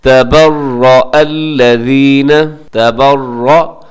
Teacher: اور اس میں ایک حمزہ ہے، حمزہ کو تھوڑا واضح کر کے آپ نے پڑھنا ہے